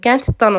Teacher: sözün sonu d ilə bitdiyi üçün samit gəldiyi zaman t kimi tələffüs olunacaq. Qənt dan olacaq.